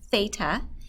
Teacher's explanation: you hear a th sound not an F sound